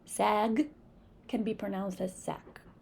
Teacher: In African American English, the G sound is sometimes pronounced as the voiceless K.